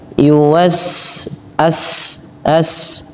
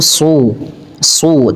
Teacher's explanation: perhatikan perbedaan antara sin dengan shad ya. Shad lebih tebal suaranya.